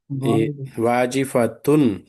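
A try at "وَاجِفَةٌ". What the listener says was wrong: ను శబ్దం చక్కగా వినబడాలి.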